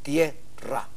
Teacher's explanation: la vocal fuerte se impone en este caso la vocal que se impone es la e tierra Tierra es una sola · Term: diptongo